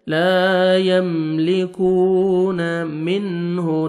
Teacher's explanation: نون ساکن کے بعد حروف حلقی میں سے ہا ہے، آپ نے اظہار کرنا ہے